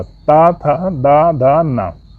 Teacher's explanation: ता वर्ग का उच्चारण स्थान दंत होगा, ता, था, दा, धा, ना। इन 5 वर्णों का उच्चारण स्थान दंत होगा।